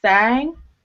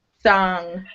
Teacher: Your jaw drops a lot lower for that U sound, so makes a difference.